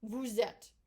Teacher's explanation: this content specifically the s and it's followed by this vowel we will make a liaison and we will pronounce it as a z